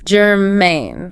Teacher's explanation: Stress on the second syllable there.